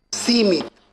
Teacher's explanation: સી ઉપર ભાર આવી જ જાય છે ઓટોમેટિક તમે બોલશો ત્યારે.